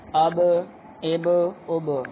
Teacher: اس کی آواز کو ہلایا ہم نے کیونکہ یہ قلقلہ میں سے ہے